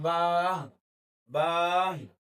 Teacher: बच्चे कि आखिर में हा की आवाज पैदा करते हैं